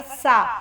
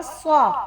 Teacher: सीन पतला है, स्वाद मोटा है